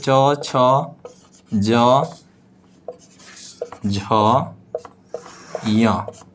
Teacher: सभी के उच्चारण स्थान तालु है, च का भी, छ का भी, ज का भी, झ का भी और य का भी। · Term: चवर्ग